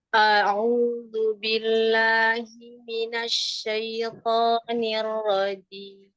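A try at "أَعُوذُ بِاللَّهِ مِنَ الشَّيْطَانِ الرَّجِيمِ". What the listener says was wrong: Bisa jim itu didorong lagi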